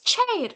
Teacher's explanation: Do you say sair? No, you say it is chair, with plosive followed by fricative ta, sha, cha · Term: affricate sound